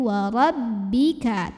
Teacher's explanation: tekanan pada huruf ba tasydid jangan sampai masuk hidung ya Jadi bukan warobbika tapi wa robbika tekanannya di bibir saja ya